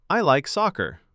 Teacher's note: The falling tone makes it sound complete and easy to follow.